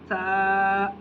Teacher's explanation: ثنایا علیہ اور ثنایا سفلی کے بیچ میں زبان کی نوک باہر آتی ہے۔ ثنایا علیہ اور ثنایا سفلی کے بیچ میں زبان کی نوک باہر آتی ہے، اور وہاں سے ادا ہوتا ہے سا۔